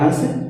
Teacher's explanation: ये अनुनासिकता होगी क्योंकि इसमें कम समय लगा है